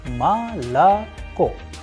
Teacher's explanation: For example, the word malako, which is also known as milk, is pronounced as malako because O is not under stress, is going to turn into a sound of A